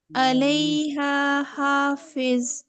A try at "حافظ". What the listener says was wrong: سیٹی نہیں ہے۔ سیٹیں نہیں ہے آپ کی، سیٹی آ رہی ہے بہت زیادہ، دعا کو نرمی سے پڑھتے ہیں، اوپر دانتوں پہ لگائیں گے۔ حافظ